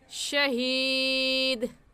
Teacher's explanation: دال حروف کلکلہ میں سے ہے تو کلکلہ کریں گے، یعنی لفظ کو ہلا کر پڑھیں گے